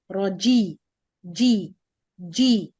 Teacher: the middle of the tongue hitting or closing with the roof of the mouth then go down with the lowering of the Jo to achieve the Kasra sound